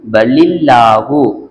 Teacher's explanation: அல்லாஹ்வுடைய லாமுக்கு முன்னால ஜர் இருந்துச்சுன்னு சொன்னா இதை மெல்லினமா ஓதிரனும்